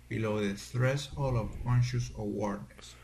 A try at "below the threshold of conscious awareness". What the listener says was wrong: Behold the threshold of conscious awareness. So you're not clearly pronouncing your S sounds in those words. Don't forget that S.